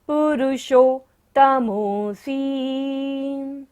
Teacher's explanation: मूर्धन्य शाह है पुरुषोत्तम में, तो मूर्धा से हमें इसका उच्चारण करना है